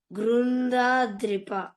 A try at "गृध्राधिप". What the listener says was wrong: गृध्रा GRIDHRA no gridra gridradhipa there is no N here gridradhipa